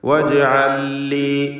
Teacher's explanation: ജീമിൻ്റെ സുക്കൂൻ ഖൽഖല സുഗ്റ നൽകി ശബ്ദം ഹറക്കത്ത് പോലെ ചലിപ്പിക്കുക